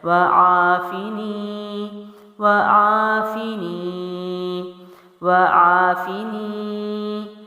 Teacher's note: فا جو ہے وہ ہونٹوں کی جانب سے ہے، زیر ہے، جلدی چھوڑیں گے